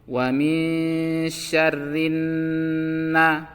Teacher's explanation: nunnya ditekan dan ditahan selama 2 harokat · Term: Gunnah